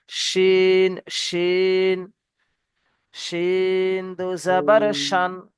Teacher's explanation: এই শিনের মাখরাজ আমাদের করতে হবে, জিভের মাঝখানকে উপরের তালুতে লাগিয়ে, লাগালেই দেখবেন মোটা মানে সিনে সিটি যেমন বাজায়, সিটি বাজায়, ঠিক তেমনি ভাবেই উচ্চারিত হবে।